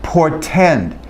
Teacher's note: in portend, it's rendered as a stop plosive. It's rendered as a normal T.